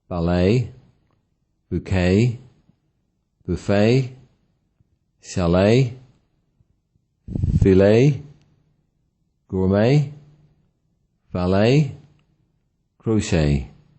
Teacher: As mentioned before, English nouns are often stressed on the first syllable. However, most foreign borrowings are stressed on the last syllable.